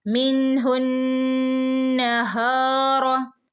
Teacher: നൂനിന് ശ്രദ്ധയുണ്ട് നൂനിനെ നന്നായിട്ട് മണിക്കണം